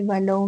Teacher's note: ولو میں واؤلین ہے، نرمی کے ساتھ ادا کریں گے